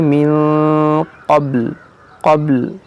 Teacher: यहाँ देखिए वक़फ़े मुतलक है, यहाँ पर वक़फ़ करेंगे तो बा तो साकिन है, लाम को भी साकिन करेंगे